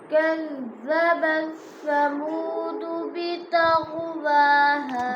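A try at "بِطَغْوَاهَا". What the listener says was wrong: तो को पूरा पढ़ो बितग़वाहा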